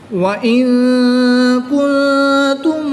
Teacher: نون ساکن کے بعد کاف حروف اخفا میں سے ہے تو یہاں پر اخفا ہوگا یعنی غنہ زمانی کریں گے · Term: اظہار شفوی